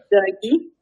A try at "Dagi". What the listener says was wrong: Oui, ben là on peut l'allonger un petit peu. Dagi, ça marche, mais on peut l'allonger un peu.